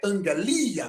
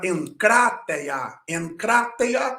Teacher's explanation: essa regra do Gama nasal Mas quem conhece vai subentender que o primeiro Gama ele vai ser traduzido ou pronunciado como n